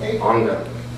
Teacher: The pronunciation will be an N for the first gamma. So it's anga. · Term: gamma nasal